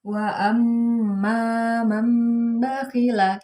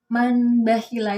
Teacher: Jadi bukan man bakhila, itu bukan. Karena ada nun mati bertemu dengan ba, sehingga bacanya diganti menjadi huruf mim. Dan bacanya wa amma man bakhila. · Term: iqlab